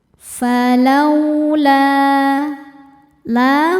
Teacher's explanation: Sebab ada alif yang sebelumnya berharakat fathah. Cara bacanya dipanjangkan dua harakat saja. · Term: mad thobi'i zohiri